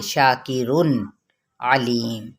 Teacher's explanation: تنوین کو یعنی نون کی آواز کو کلیئر کر دیں گے، اظہار کر دیں گے